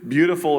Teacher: beautiful is rhythmic and it's got this rise and fall it's undulating